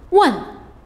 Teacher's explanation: the fourth tone the falling tone